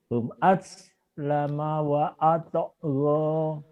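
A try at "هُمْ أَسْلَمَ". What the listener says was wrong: Home-nya jangan home gitu ini. Hum aslama.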